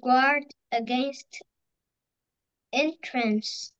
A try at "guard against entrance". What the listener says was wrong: Very good, very well pronounced.